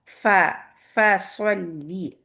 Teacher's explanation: فا بھی چونکہ ہمارا ہمس لیٹر ہے، پہلے ایئر آئے گی، پھر فتحہ کے لیے آپ کا جہر آئے گا